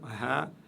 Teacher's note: la lettre Ha, et je l'ai expliqué, tout au fond de la gorge. Cette lettre Ha, vous voyez, tout en bas de la gorge, ici, la flèche montre d'où le son part.